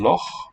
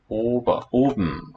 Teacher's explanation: No diphthongs there. O short as in loch, long o as in oben